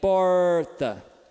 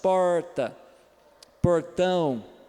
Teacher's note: Ok, agora o número 6 é o alveolar retroflexo. Então, é a pontinha da língua que dobra para trás ao fazer o som. Então, esse aí, por exemplo, é o nosso famoso R, do interior.